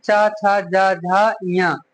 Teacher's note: और तालु से होते हैं च, छ, ज, झ, ञ